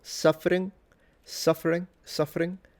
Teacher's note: but he fully nasalizes. Basically the G in that situation is acting as a nasalization of the N.